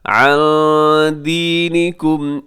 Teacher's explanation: نون ساکن کے بعد دال ہے، اخفا کیجیے گا